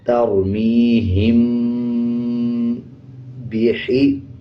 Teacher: میم کے اوپر جزم آ جائے اس کے بعد با آ رہا ہو تب غنہ کیا جاتا ہے اور غننے کی آواز کو ناک سے نکالیں گے